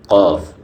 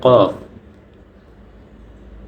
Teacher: জিহ্বার গোড়া তার বরাবর উপরের তালুর সঙ্গে লাগিয়ে